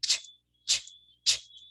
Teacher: Okay, blade, this is the blade. Approaching or touching the alveolar ridge and the main body of the tongue near the hard palate. Okay, having a primary alveolar articulation and a secondary palatal articulation.